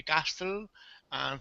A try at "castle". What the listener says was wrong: Castle. So it sounds like castle. So no T. The T is silent. Castle.